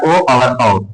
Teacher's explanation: जैसे कंठ प्लस तालु मिलके बनता है कंठ तालव्य। उसी प्रकार कंठ प्लस ओष्ठ मिलके बनता है कंठोष्। और कंठोस्थ में ये होता है ओ और औ।